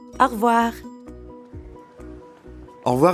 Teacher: when French speakers say au revoir quickly, it can sound like one word.